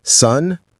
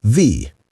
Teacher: In sun, your tongue is up on the roof of your mouth. In the, your tongue is between your teeth.